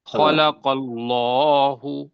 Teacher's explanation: اگر جی سر، اگر اس سے پہلے لفظ پہ زبر یا پیش آئے اللہ سے تو اس کو موٹا پڑھنا ہے سر